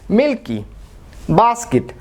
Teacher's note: এই যে ক সাউন্ডটি রয়েছে এটা যেহেতু আনস্ট্রেসড হচ্ছে এবং এর কারণে এটা আনএসপিরেটেড হচ্ছে, অর্থাৎ ক সাউন্ড দিচ্ছে, এটা কিন্তু খ সাউন্ড দিচ্ছে না।